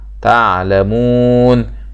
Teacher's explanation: لا تعلمون مد طبيعي في الألف بعد اللام، والعين طبعا ننتبه لمخرج العين، وكنا نسمع من القراء يقول إيه إيتي بالبعبعة في العين، يعني هذا الصوت تعلمون، هذا هو مخرج الايه حرف العين من الحلق، وطبعا بنقف عليها مد عارض للسقوط.